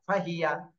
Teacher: এখানে হচ্ছে হরকত, টান দেওয়া যাবে না। ফাহিয়া দ্রুত ছেড়ে দিতে হবে